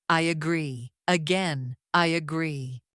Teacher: Instead of I pause agree. Americans connect them with a Y sound.